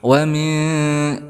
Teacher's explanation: nun sukun bertemu dengan huruf ikhfa sudah dijelaskan, maka menjadi ikhfa ausat